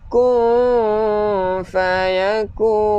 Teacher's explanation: Kun, nun yang kosong, lidah di tengah-tengah sambil kita dengung.